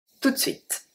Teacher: If you say it fast, you don't say the E